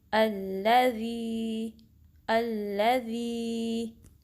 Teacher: ज़ी के 2 काउंट्स लंबा करेंगे, हमज़ा को लाम से मिलाएंगे